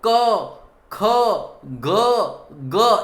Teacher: તમારા ગળાની અંદરથી, કંઠની અંદરથી ઉત્પન્ન થાય છે, એટલા માટે એને કંઠ વ્યંજન કહેવામાં આવે છે